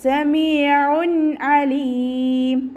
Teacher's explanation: തെൻവീനിന് ശേഷം ഇബ്ഹാറിൻ്റെ ലെറ്ററായിട്ടുള്ള അയിന് വന്നു. അപ്പോൾ തെൻവീനിലുള്ള നൂനിൻ്റെ സൗണ്ടിനെ വ്യക്തമാക്കി മണിക്കാതെ ഉച്ചരിക്കുക. നൂനിൻ്റെ സൗണ്ടിനെ വ്യക്തമായിട്ട് കേൾക്കണം. · അയിനിൻ്റെ സൗണ്ടിനെ തൊണ്ടയുടെ മധ്യഭാഗത്ത് തന്നെ കൊണ്ടുവരിക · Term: ഇദ്ഹാറിൻ്റെ